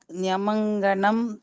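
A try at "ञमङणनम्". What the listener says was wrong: நீங்க எல்லாரும் அதை சேர்த்து படிக்கணும்னு நினைக்கிறேன். அதனாலதான் தப்பு வருது. பிரிச்சு படிங்க. ஞமங்கணனம்.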